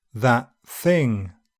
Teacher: if the next sound is DENTAL, the /t/ becomes an unreleased dental /t/